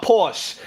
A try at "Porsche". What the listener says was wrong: The word is Porsche. The E you pronounce. You pronounce the E.